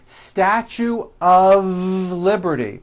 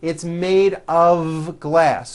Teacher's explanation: even though the word um is spelled with an F we pronounce the word of with a voice v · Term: of exception